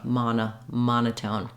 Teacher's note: a short reduced sound Mona monotone it's almost it's very fast the ma is stretched and the n and tone are shorter but we do have secondary stress on the last syllable tone because we have our clear o vowel here so it's just